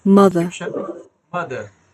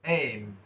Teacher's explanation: দুই ঠোঁট বন্ধ হবে, হ্যাঁ এটা ন্যাসাল ক্যাভিটি, এবং খেয়াল করেন কোন দিক দিয়ে বাতাসটা যাচ্ছে, কোথায়, নাক দিয়ে যাচ্ছে, হ্যাঁ তাহলে এটা ন্যাসাল সাউন্ড